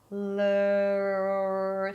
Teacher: the tip of the tongue is not touching anything and you're able to hold it out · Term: R sound